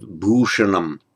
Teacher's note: retroflex sh, and n following is also retroflex.